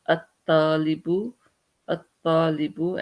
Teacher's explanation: ta is a sun letter, lam is silent, and there is a shadda on the ta, which makes it double